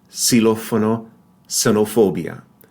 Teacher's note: when X is word initial, like in xilófono, notice it's that voiceless S sound